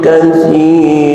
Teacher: yang terdengar oleh kuping bukan suara tanwin tapi suara panjang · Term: mad iwad